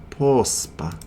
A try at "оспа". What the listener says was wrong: Not post. There's no P at the beginning.